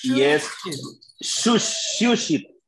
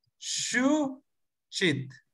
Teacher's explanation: la segunda es cortante y con che, chit. No tiene que oírse ningún ceseo antes de la che.